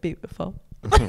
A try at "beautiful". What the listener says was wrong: I say, you guys add an extra syllable in there. I'm just like, beautiful. Beautiful.